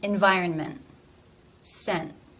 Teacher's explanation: the ending consonant cluster NT, where it is pronounced as a stop